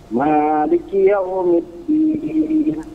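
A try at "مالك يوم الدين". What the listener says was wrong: Sedikit lagi, antum pangkas lagi. Jangan terlalu panjang ma-nya.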